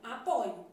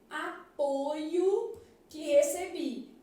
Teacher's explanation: plural então falso depois eu tenho assim ó no verbo apoiar a forma de primeira pessoa do presente do indicativo apresenta a letra O aberta